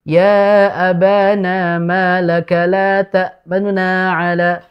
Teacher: Raum itu membaca harokat dhammah tidak sempurna. Jadi hanya ya mungkin sepertiga harokat dan temponya lebih cepat. · Dibaca cepat dan nunya itu tidak begitu jelas.